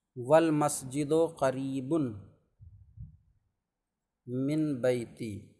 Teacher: قریب نون کے بعد تنوین کے بعد میم آ رہا ہے، تو ادغام کر کے پڑھ سکتے ہیں